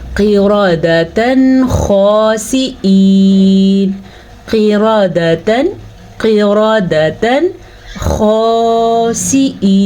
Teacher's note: काफ को मोटा पढ़िएगा, काफ हमेशा मोटा पढ़ा जाता है। रॉ को भी आपने पुर पढ़ना है क्योंकि रॉ के ऊपर ज़बर है।